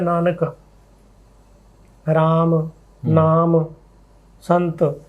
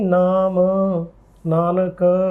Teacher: ਅੱਜ ਕੱਲ੍ਹ ਅਸੀਂ ਅੰਤਮ ਜਿਹੜਾ ਮੁਕਤਾ ਅੰਤ ਹੁੰਦਾ ਜੀ, ਉਹਨੂੰ ਅਸੀਂ ਵਿਅੰਜਨੰਤ ਬੋਲਦੇ ਹਾਂ।